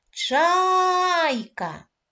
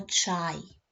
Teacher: в слові Чайка два склади перший склад наголошений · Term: наголошений склад